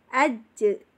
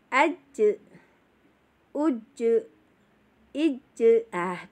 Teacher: huruf jim ini bila dimatikan atau disukunkan, dia akan mempunyai bacaan tersendiri ya, yaitu qalqalah, artinya memantul.